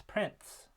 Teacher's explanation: is pronounced with a t between the n and the S sound in order to break up those continuent sounds with a stop